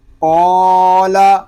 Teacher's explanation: الف سے پہلے پر حرف آ گیا ہے، اس لیے الف کو ہم پر پڑھیں گے، یعنی موٹا پڑھیں گے · قاف الف زبر قا، لام زبر لا، قال قاف پر الف مدہ لام باریک. یہاں الف پر اس لیے ہو رہا ہے کہ الف سے پہلے پر حرف آ گیا ہے، اور ابھی ہم نے قاعدے میں پڑھا کہ الف سے پہلے اگر پر حرف آ جائے تو الف کو ہم پر پڑھیں گے.